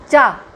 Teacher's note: च अघोष है जिसमें पूरा मुंह नहीं खुलता